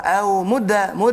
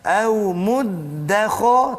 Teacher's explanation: Di situ kena jaga. Dal ada tasydid, jangan ringankan tasydid tu.